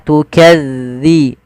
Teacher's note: harusnya tukadzi tipis dalalnya tidak ada desis